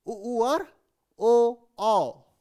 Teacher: इनमें हम जो है वो गोल स्वर, मुंह की आकृति जो है ऐसे गोल हो जाती है, इसीलिए इन्हें वृत्ताकार बोला जाता है। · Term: वृत्ताकार स्वर